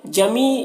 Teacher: یہاں پر یا مدہ ہے، ایک الف کے برابر کھینچیں گے